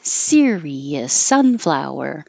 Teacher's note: So Sirius has 3 syllables, stress on the first syllable like sunflower.